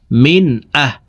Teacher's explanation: এই নুন সাকিনকে গুন্না ছাড়া পড়তে হবে · তো এখানে দেখুন, নুন সাকিনের পরে ইজহারের 6 হরফের একটি হরফ হামজা আসছে, এই কারণে এই নুন সাকিনকে গুন্না ছাড়া স্পষ্ট করিয়া পড়ব। মিম নুন জের মিন, হামজা হা জবর আহ, মিন আহ।